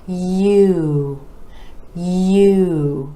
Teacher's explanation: for this vowel sound we're gliding from the yeah to you